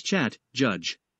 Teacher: the sound begins with a brief stop of the airflow followed by a release of the air with friction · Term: affricate consonant